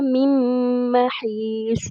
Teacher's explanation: میم کے اوپر ہم رکیں گے 2 سیکنڈ کے جتنا ہم اسٹے کریں گے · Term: ادغام مع الغنہ